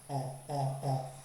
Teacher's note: Como si fueran a decir una o, más o menos como entre una a y una o, on, pero es como más de la garganta, on, on, on, listo.